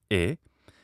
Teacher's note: the close mid front unrounded vowel is e and this is a vowel that occurs in italian and french